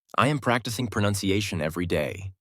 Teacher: The strong words are practicing, pronunciation, and day.